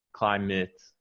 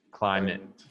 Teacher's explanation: The ATE at the end of this word, it just sounds like the schwa